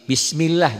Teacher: Sebelum lafaz Allah ada huruf yang berbaris di bawah. Di bawah atau kasrah. Berarti dibacanya tipis